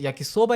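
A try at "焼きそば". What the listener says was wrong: É questão de acento, de acentuação. Em japonês não existe a sílaba tônica. Não existe uma sílaba mais forte.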